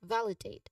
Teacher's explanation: validate the stress is on the first syllable val which has a short a sound like in cut and the second syllable date which has a long a sound like in say that's a dip thong and then the middle le has a short e sound. · Now pronunciation wise validate the stress is on the first syllable val which has a short a sound like in cut and the second syllable date which has a long a sound like in say that's a dip thong